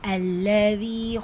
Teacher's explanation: அல்லதி லாமில் ஷத்தா இருக்குது, அழுத்தம் கொடுத்து ஓதணும். தீல யா மத்தா மதுல் அஸ்லி 2 ஹரக்கத்தளவு நீட்டம் கொடுத்து ஓதணும்.